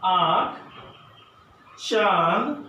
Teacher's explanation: जिन स्वरों का उच्चारण नाक और मुंह दोनों से होता है उन्हें अनुनासिक कहते हैं